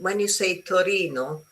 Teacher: When you say Torino, your tongue is on your teeth.